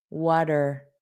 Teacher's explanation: So it just sounds like an not a strong R, water. And this T will become a soft D.